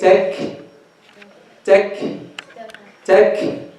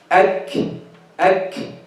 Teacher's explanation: we are starting the kaf with its shidda and ending with its hams. In the beginning of the kaf, the sound is closed completely.